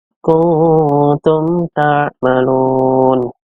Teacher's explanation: Dibacanya jelas yang keluarnya dari kedua bibir. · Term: Idhar syafawi